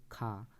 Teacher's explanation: ये महाप्राण ध्वनि है और अघोष भी है और कंठ से इसका उच्चारण स्थान होता है और स्पर्श व्यंजन भी है।